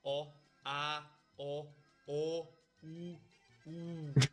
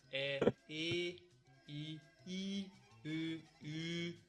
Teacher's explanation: vowel harmony, where there are two sets of vowels: the back vowels, o, a, o, u, u, and the front vowels, e, i, u, u